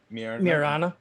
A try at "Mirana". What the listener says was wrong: Mirana. Wow, wrong syllable in the wrong place. Mirana.